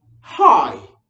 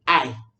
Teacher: H dropping is when a speaker does not articulate the H that comes in the word initial position. That's when letter H is the first letter of a word and the speaker drops it.